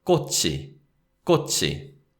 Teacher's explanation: So 꽃 ends in a 치읓 final consonant, 받침, and it's followed by the subject marking particle 이. And because we have 이, the particle, the sound of 치읓 links with that syllable